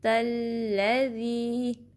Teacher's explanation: تا کو لام سے ملانا ہے، تھوڑا ٹائم دینے کے بعد زبر پڑھیں گے